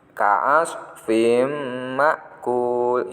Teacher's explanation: tanwin bertemu dengan mim, dibaca idgham bihunna, dibacanya mendengung.